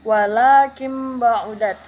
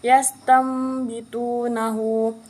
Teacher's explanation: Iklab artinya membalik atau menukar. Tegasnya huruf nun atau tanwin itu ketika itu dibalik atau ditukar menjadi mim. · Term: hukum iklab